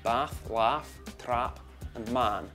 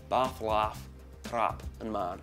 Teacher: the vowels in bath and laugh are the same as the vowels in trap and man. So quite often they're different for other accents, but in this accent they're the same.